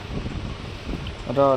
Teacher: इसके उच्चारण में जीभ ऊपर की ओर मुड़ जाती है। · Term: लुंठित